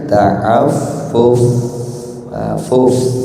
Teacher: Jadi cirinya hamas itu ada nafas yang mengalir.